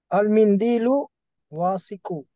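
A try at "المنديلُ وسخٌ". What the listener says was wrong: Complete the vowels. It should be faster. Wasikun. Wasikun. Okay, there is no long vowel between waw and sin. So it should be wasikun.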